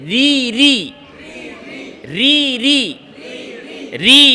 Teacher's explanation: ইস্তিফাল, জিহ্বা নিচের দিকে।